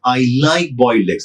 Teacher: if the stress is shifted to like, I like boiled eggs, I don't hate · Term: sentence stress